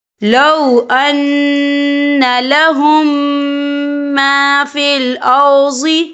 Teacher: ہم پچھلے میم کو اگلے میم میں مدغم کریں گے اور ہم یہاں غنہ بھی کریں گے۔ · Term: ادغام شفوی